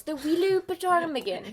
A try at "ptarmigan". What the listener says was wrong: It's actually pronounced ptarmigan. But it's like pterodactyl. The P is silent.